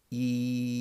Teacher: e is a front vowel so the tongue is really really far forwards